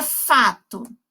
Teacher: Esses sons são orais, ou seja, eu estou utilizando somente a boca para eu fazer a emissão desse som.